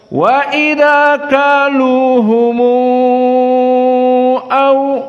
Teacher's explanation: qiraah Wars dari qiraah yang lainnya maka dibaca waidzauhumu au dan di sini humu dibaca dalam keadaan enam harakah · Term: silatul mim aljamak